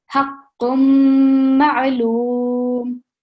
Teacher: the noon sound which comes from the tanween, it's going to be masked and it's going to be replaced by the mim sound